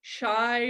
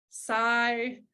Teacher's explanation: substituting a non-palatal consonant for a palatal consonant shy might sound like psy again this is simplifying the movement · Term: departalization